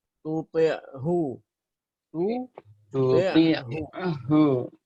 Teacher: Jangan sampai menebalkan ha ketika berada di samping huruf ain